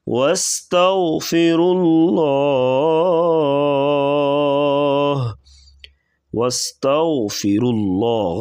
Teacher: غین کو پر پڑھیں گے اور را کو بھی پر پڑھا جائے گا